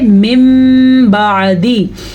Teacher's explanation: ہم میم پڑھیں گے، نون نہیں پڑھیں گے اور غنّے کے ساتھ پڑھیں گے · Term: اقلاب